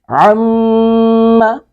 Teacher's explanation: عم میم پر شد ہے اور اس پر ہم غنہ کریں گے۔